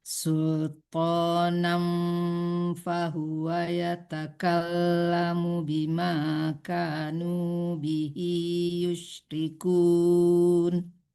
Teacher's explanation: Sultanan, jangan tekankan nun ya. Jadi disamarkan ke fa. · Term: ikhfa hakiki